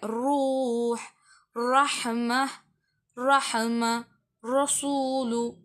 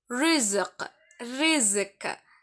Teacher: ராவை மெல்லியதாக நான் சொல்லுவேன். ரொம்ப காற்றை வெளிய விடுவது போலதான் சொல்லுவேன். வாய் வந்து ஓபன்ல இருக்க மாதிரி சொல்லுவேன். அங்க வாயை கும்மிச்ச சொன்னே இந்த ராவ நான் வாயை ஓபன்ல இருக்க மாதிரி சொல்லுவேன்.